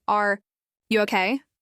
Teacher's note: If someone just had a bad day and you say, are you okay? Softly with rising intonation and a slower pace, it shows you care.